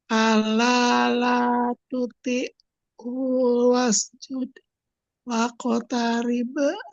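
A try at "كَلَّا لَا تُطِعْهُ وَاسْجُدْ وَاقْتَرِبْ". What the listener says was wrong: U-nya tidak boleh panjang.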